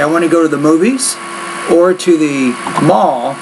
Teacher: So if I say I want to go to the movies or to the mall, that first idea, your tone has to be slightly inflected on the first idea there, and then when you get to the second one, then you drop it just a little bit